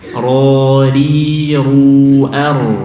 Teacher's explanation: ro dhammah harus tebal